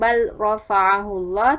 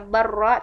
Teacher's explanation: Selanjutnya pada bab mutaqaribain ada bacaan yang tetap dibaca izhar. Pada bacaan bal rafa'ahullah tidak dibaca barra tetapi tetap bal ra